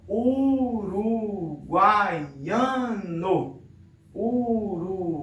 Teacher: Aqui eu tenho 3 vogais, né, na mesma sílaba, então eu teria o que nós chamamos de tritongo